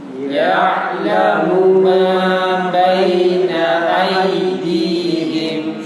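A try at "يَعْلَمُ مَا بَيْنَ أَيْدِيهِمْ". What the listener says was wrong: Ya, ya'lamu ma, munya pendek ya. Tadi yang panjang. Ya'lamu ma langsung mu ma, karena munya enggak ada dhammanya. Enggak ada waw sukunnya. Jadi dia satu. Kalau satu langsung nyambung.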